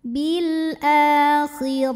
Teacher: huruf ro dibunyikan secara tafkhim karena berbaris fathah maka dibacanya ditebalkan